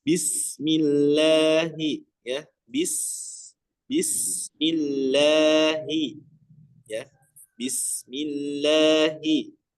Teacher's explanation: huruf ba dengan sin langsung dimasukkan ya. Jangan ditatwil. Tatwil itu dipanjangkan bnya terlebih dahulu ya.